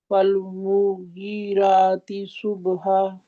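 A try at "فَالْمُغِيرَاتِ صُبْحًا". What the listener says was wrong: غین موٹا حرف ہے کہ باریک ہے؟ موٹا ہے تو اس کو موٹا کریں.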